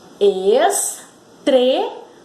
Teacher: Vejam que deu uma subida na hora que nós pronunciamos a sílaba tre. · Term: sílaba tônica